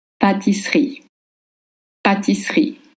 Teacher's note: In French, double S makes the sound S, like in snake, not sh.